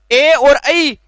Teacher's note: ए और ऐ, इन दोनों वर्णों का उच्चारण स्थान होगा कंठ तालु।